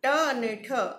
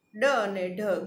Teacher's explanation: ટ અને ઠ અઘોષ, ડ અને ઢ ઘોષ, તેમજ ટ અને ડ એ અલ્પપ્રાણ વ્યંજનો છે અને ઠ અને ઢ એ મહાપ્રાણ વ્યંજનો છે.